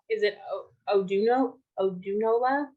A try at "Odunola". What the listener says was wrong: The thing is, the N is silent. The N is silent. Yeah, the N. Odunola. So the N is silent in my name. A lot of people call it like that. They say Odunola, but the N is silent. So you don't call the N. Say Odunola.